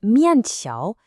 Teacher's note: The first character is a fourth tone. It's a sharp drop. Then, the second one is a second tone. It goes up. So you have this down up motion.